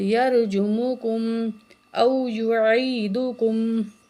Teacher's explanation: واو کے جو ساکن ہو اسے پہلے پیش ہو تو ایک الف کے برابر ہم واو کو کھینچ کے پڑھیں گے ، کیونکہ یہ حروف مدہ میں سے ہے، ٹھیک ہے۔ یرجموکم